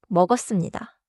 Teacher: In natural speech, 먹었습니다 sounds like 머거씀니다. The spelling stays 먹었습니다, but the sound is smoother.